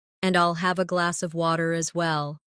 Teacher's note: In connected speech, glass of sounds like glass a.